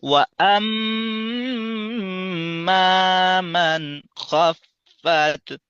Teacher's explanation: আর গুণনার আওয়াজটা আমাদের নাকের বাঁশি, অর্থাৎ নাকের একেবারে ভিতর থেকে পাতলা আওয়াজটা বের করতে হবে।